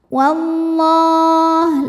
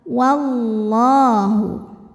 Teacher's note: lam jalalah dibunyikan secara tafkhim karena didahului harakat fathah maka lamnya tebal